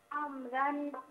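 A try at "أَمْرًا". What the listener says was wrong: अमरन नहीं, मीम को बिल्कुल साकिन करें।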